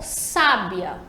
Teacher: A sílaba tônica é o sa, a primeira sílaba, sa, sábia, e identificada ali pelo acento, sábia.